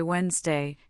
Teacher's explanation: In the common word Wednesday, we actually say Wednesday, completely dropping the first D. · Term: silent